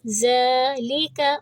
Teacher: زال کو ہم 2 حرکہ کریں گے کیونکہ اس کے اوپر ہے کھڑی زبر، ذالک، اور زال کو نرمی سے پڑھا جاتا ہے۔